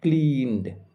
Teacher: ন সাউন্ড এরপরে ইডি রয়েছে, তাই ইডি এর উচ্চারণ হবে ড এর মতো